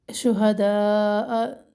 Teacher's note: شہداء مد ہے دو الف کے برابر